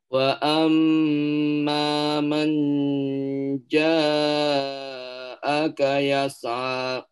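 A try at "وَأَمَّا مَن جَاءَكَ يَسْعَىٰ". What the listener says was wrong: Baik, hati-hati jangan sampai man ya. Wa amma manja. Bukan manja itu jelas ya karena bunyi nun sukun. Wa amma manja itu hanya izhar yang dipanjangkan, yang didengungkan ya. Sementara ini ikhfa, jadi ikhfa itu disamarkan.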